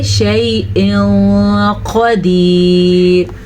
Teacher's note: تنوین کو چھپا کے پڑھیں گے اور غنے کے ساتھ پڑھیں گے. یعنی کہ شیء قدیر کے بجائے ہم پڑھیں گے شیء قدیر.